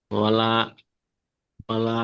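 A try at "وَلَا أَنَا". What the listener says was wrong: ওয়ালা আন হবে না, ওয়ালা আনা। ওয়ালা আনা।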